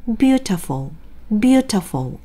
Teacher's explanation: beautiful이 아니라 세게 읽으면서 살짝 음도 높아요 · 실제 이 단어의 강세는 첫 번째 모음인 U에 찍혀 있습니다